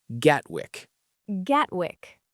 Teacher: Many speakers make the T very small. You can say Gatwick, but it may sound more natural as Gawick with a light T.